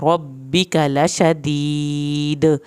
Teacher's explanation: यहाँ पे दाल का आखिर में कलकला हो रहा है